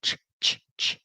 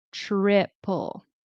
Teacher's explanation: remember with the T and the R, very often it will turn into a ch sound